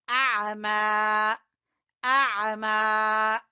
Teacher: عین کو وسط حلق سے نکالیں گے